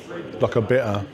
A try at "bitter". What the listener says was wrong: There's 2 T's in bitter. You can pronounce one of them.